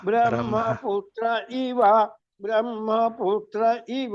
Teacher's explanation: బ్రహ్మ అంటున్నారు, మహా ఉదాత్తం వెళ్తున్నదండి అది.